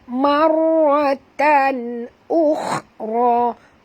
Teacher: Tanwin bertemu dengan hamzah, tak boleh dengung, izhar halqi.